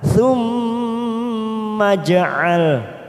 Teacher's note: jim sukun warna biru namanya bacaan qalqalah sughra karena mati di tengah kalimat kita pantulkan.